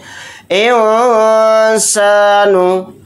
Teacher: सीन हुरूफ इख्फा के हुरूफ में से एक हर्फ है तो नून की आवाज़ को नाक में छिपाकर इख्फा